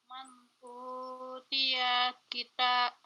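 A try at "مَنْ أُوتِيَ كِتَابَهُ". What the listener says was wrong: Diulang. Tanya panjang Bunda.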